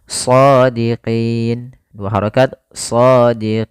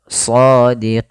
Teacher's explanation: Kemudian sebelum huruf nun ada huruf ya. Nah, maka pada lafal qi itu kita boleh memanjangkan 2 harokat atau 4 harokat atau 6 harokat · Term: mad arid disukun